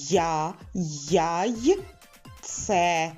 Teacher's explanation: звукосполучення й А ми вимовили на початку слова